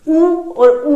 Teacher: ऊ और ऊ के उच्चारण में हमारे ओष्ठ की आकृति गोल हो जाती है, वृत्ताकार हो जाती है